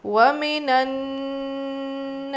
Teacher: الف مدہ ہے، کھینچیں گے اور نون پہ اچھے سے غنہ کرنا ہے